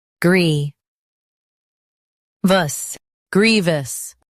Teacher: Stress grie and keep vous light.